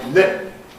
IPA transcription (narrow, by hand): lɪp̚